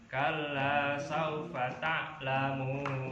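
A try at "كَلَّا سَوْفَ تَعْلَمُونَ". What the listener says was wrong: Nah, itu pas. 6 ketukan atau 6 harokat.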